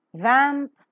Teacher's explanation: a small narrow Gap that is left within the lower lip and the upper teeth hence it is labio and dental